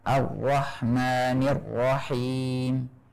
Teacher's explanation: mengucapkan ro tanpa getaran, seperti yang telah kita singgung, seperti ro-nya orang yang mengucapkan bahasa Inggris. Misalnya Ar-Rahmanir Rahim, tanpa getaran sama sekali.